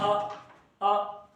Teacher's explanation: मध्य भाग से हमारा अ उच्चरित होता है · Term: मध्य स्वर